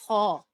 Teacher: खौ पहला मोटा लेटर है, ठीक है, मोटा लेटर है खौ। इसको हमेशा हमने हलक से अदा करना है, फ्रिक्शन के साथ, यानी कि हलक में खराश हो और हलक के बिल्कुल बीचों बीच से आवाज आए और आपके होंठों का शेप भी गोल हो